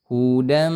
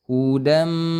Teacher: Tanwin itu seperti bunyi nun, hudan asalnya, tapi karena bertemu dengan huruf mim, maka dia melebur menjadi suara mim. Hudam, kemudian ditahan dulu 2 harokat. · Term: idgham bi gunnah